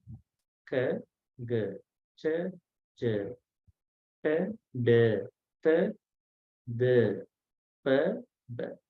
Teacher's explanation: The first and the third are unaspirated.